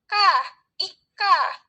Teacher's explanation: Lalu fonem K, cara artikulasinya juga ada di plosif atau letupan. Lalu tempat artikulasinya ada di velar. Velar itu langit-langit lunak.